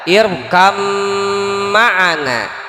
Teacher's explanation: Tapi di sini dikasih contohnya di idgham mutaqaribain karena bim, ba dan mim satu makhraj dari syafatain